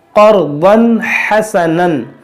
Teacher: تنوین کے بعد حا ہے, یہاں پر اظہار ہوگا, بغیر گنہ کے پڑھیں گے. · قاف موٹا ہوگا, را بھی موٹا ہوگا, ضاد بھی موٹا ہوگا, سب موٹا ہوگا یہاں پر.